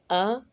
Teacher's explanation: زبر یا فتحہ پڑھتے ہوئے ہونٹوں کو گول نہیں کریں گے اور نہ ہی حرف کو کھینچیں گے کہ وہ مد لگنے لگے، اور نہ ہی اتنا جلدی چھوڑیں گے کہ اس میں جھٹکا محسوس ہو، بلکہ ان دونوں باتوں کا خیال رکھتے ہوئے آرام سے ادائیگی کریں گے۔